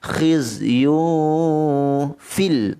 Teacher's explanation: tanwin bertemu dengan fa, ikhfa hakiki dengungkan dengan kadar dua harakat. Khizyun fil terus masukkan kepada lam, izhar qamariyah.